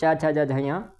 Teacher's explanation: इनका उच्चारण करेंगे च छ ज झय तो तालू से जीव टच होगी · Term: तालव्य वर्ण